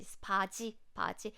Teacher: When you pronounce this G sound here, it's similar to CH with less air, lower pitch.